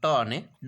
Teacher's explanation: ટ અને ડ છે એ અલ્પપ્રાણ ધ્વનિ છે